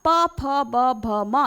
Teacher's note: प फ ब भ म यानी कि ओष्ठ स्पर्श हो रहे हैं, है ना, तो इनका उच्चारण स्थान क्या हो जाता है, ओष्ठ हो जाता है।